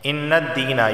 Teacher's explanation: یا سے پہلے زیر ہے تو اسے ایک الف کے برابر کھینچ کر پڑھا جائے گا